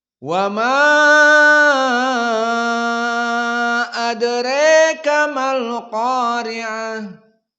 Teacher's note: dibaca dengan al-imalah al-kubra pada adraka. Dan yang kedua dibaca dengan al-isba' pada majaiz munfasil.